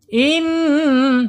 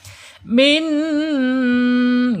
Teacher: Kemudian sifat yang tidak berlawanannya yaitu gunnah. Ketika nun ini bertasydid, maka dibaca gunnah, ditahan 2 harokat.